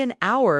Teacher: We say an hour because H is silent. So the first sound is the vowel.